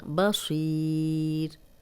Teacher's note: صاد کو موٹا پڑھیں گے